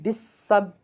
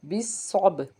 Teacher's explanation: बा के ऊपर जजम होने की वजह से कलक होगा